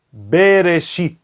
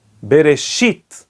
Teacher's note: A sílaba tônica é o shit, é oxítona. E por isso o ta'am se encontra no shin, bereshit.